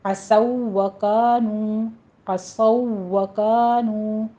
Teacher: ہونٹوں کو گول کیجیے اور واو کی تشدید ادا کرنی ہے۔ کانو میں وہی الف مدہ واو مدہ ہے۔ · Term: ادغام واو کا واو میں